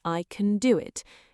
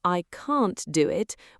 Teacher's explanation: Compare that to I can't do it, where can't is stressed and clearly pronounced · Can, strong form rhymes with man. Weak form sounds like kn, barely a vowel at all. I can do it sounds like I can do it.